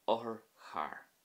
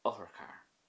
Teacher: the o at the start there was quick and relatively sharp